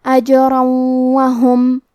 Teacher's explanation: آخری میں را پہ تنوین زبر ہے، پھر حرف الواو ہے کلمت وہم، کیونکہ یہاں حکم ہے ادغام بغنہ تو ہم یہ حکم کو غنہ اور تشدید کے ساتھ ادا کریں گے